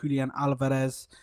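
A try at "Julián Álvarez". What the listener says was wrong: It's Julian Alvarez. It's Julian Alvarez. Alvarez. It's TH at the end. It's not Julian Alvarez. Julian Alvarez. Julian Alvarez.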